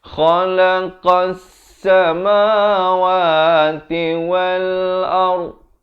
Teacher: Kha di hujung kerongkong, qa di pangkal lidah, tempat keluarnya.